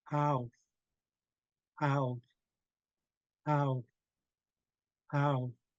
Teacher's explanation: so we don't pause and say ah pause and say o pause and say it just gets Blended all together as ow